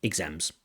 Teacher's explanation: it almost sounds like an Iz exams exams but importantly stri press on the second syllable not the first